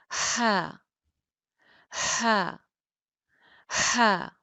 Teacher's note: لیکن جو دوسرا والا ہا ہے وہ ہم باہر کی طرف تھرو کرتے ہیں، درمیان حلق سے آواز نکلتی ہے، نیچے کی طرف نہیں جاتی بلکہ منہ سے باہر کی طرف تھرو کر دیتے ہیں